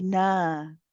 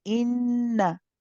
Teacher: be careful not to prolong the fatha on the noon.